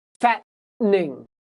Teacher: T vowel N sometimes will disappear